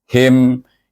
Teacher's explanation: Daripada ha pangkal halkum pergi kepada mulut pula.